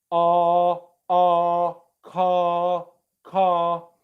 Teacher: for r the tongue is much further back in the mouth